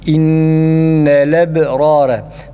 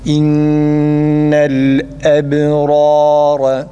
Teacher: Farkında olmadan bu şekilde okumuş oluruz. Onun için lamın üstüne tam durup hemzeyi boğazın kapanıp açılmasıyla net bir şekilde çıkması gerekir.